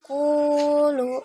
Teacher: Ya itu termasuk ke dalam mad tabi'i karena ada dhammah bertemu dengan wawu dibaca satu alif atau dua harokat